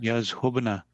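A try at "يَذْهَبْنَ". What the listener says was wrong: Yazhabna, yes. Zahaba yazhabu. From there, yazhabna, they go. Yeah, yazhabna, because zahaba, yazhabu. Yeah, so middle radical has a fatha.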